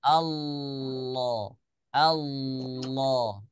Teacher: makhrajnya tetap di makhraj huruf lam cuman rahangnya dia naik ke rahang tebal ya suaranya Suara yang yang tebal itu suaranya tebal R suaranya